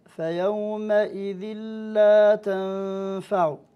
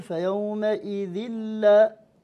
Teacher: هذا التنوين حكمه الإدغام بغير غنة